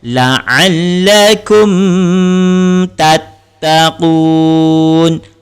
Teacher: Cara bacaannya dibaca dengan jelas dan tidak dengung ataupun tidak ditahan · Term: izhar syafawi